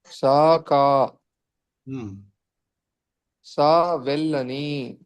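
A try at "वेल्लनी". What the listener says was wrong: మీకు సంస్కృతంలో హ్రస్వ ఏకారం ఉండదు, వే అనే మాట లేదు, అసలు ఉండదు, వే ఉంటుంది అంతే. ఏ ఔ ఉంటుంది కానీ ఏ ఔ ఉండదు సంస్కృతంలో, ఏ ఔ మాత్రమే ఉంటుంది.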